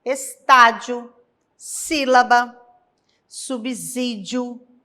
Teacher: proparoxítonas, que são as palavras cuja antepenúltima sílaba é a forte, é a tônica